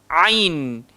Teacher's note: dia keluar dekat tengah-tengah tekak. Ain. So bunyi dia a.